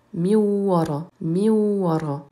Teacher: On a remplacé le nun de min par un waw et on appuie donc sur le son w